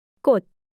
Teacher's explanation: 모두 디귿이 되어 같은 소리가 나네요